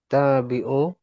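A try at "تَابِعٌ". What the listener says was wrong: Tabi'un ke tanwin.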